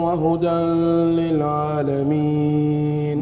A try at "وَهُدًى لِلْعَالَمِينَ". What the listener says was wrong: ما في غنة وهدى للعالمين.